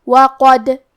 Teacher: کلمت وقد میں حرف الدال پہ جزم ہے کیونکہ دال بھی حروف القلقلہ میں سے ہے تو ہم یہ حرف کو ہلاتے ہوئے یہ کلمہ کو پڑھیں گے